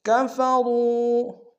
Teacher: رو میں واو مدہ ہے، اور را کو موٹا ادا کریں گے